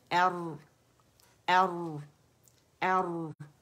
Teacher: را میں توسط ہے، پارشلی آواز چلے گی. یہاں آواز جو چلتی ہے نا، تو ایک تو آواز سختی سے رک جاتی ہے، ایک چلتی ہے، اور ایک پھر درمیانی آواز ہے جسے توسط کہتے ہیں.